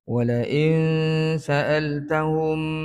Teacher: nun mati bertemu dengan Sin ikhfa Hakiki kita baca dengan dengung Qadar dua harakat sembunyikan bunyi Nun itu ke dalam huruf sin dia akan jadi gabungan bunyi bukan bunyi Nun bukan bunyi [Musik]